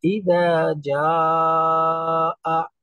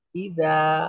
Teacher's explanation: জিমটা তুলনামূলক দালের চাইতে জিহ্বার মাঝখান থেকে তালুর সাথে রেখে উচ্চারণ হবে একটু শক্ত